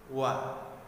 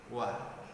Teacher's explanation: huruf waw tempat keluarnya yaitu dengan cara mengumpulkan suara kita antara dua bibir kita, yaitu bibir atas dan bibir bawah